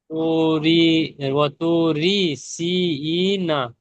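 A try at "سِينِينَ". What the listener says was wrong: নি না, ই নয়, নি নি।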